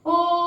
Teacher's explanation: ओम का उच्चारण करते हैं तो ओ को अधिक देर तक खींचते हैं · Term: फ्लुत स्वर